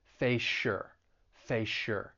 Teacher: you have that s sound in face we're going to blend it together with the y in your and you're going to end up with a sh sound